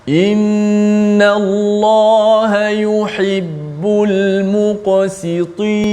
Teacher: Jelaskan qaf yang tebal muqa, kemudian sin yang berbaris di bawah si nipiskan, kemudian ta yang berbaris di bawah juga ditebalkan.